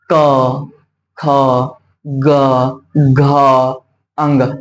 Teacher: जब हम क से अंग तक पढ़ेंगे ना, तो किसको स्पर्श करती है बाबू, तो कंठ को स्पर्श करती है। क, ख, ग, घ, अंग, ये कंठ को स्पर्श करती है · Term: क वर्ग